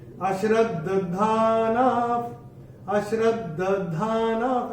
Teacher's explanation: ये जो एक द आधा है और एक द पूरा है, दोनों सुनाई देने चाहिए, कान में पड़ने चाहिए।